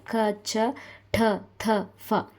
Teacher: 10 next ಮಹಾಪ್ರಾಣ ಮಹಾ ಅಂತ ಅಂದ್ರೆ ಹೆಚ್ಚು ಪ್ರಾಣ ಅಂದ್ರೆ ಉಸಿರು ಅಂದ್ರೆ ಹೆಚ್ಚು ಉಸಿರಿನ ಸಹಾಯದಿಂದ ಉಚ್ಚರಿಸಲ್ಪಡುವ ವರ್ಗದ ದ್ವಿತೀಯ